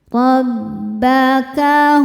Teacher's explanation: huruf ro dibaca secara tafkhim karena harakatnya di atas yaitu harakat fathah.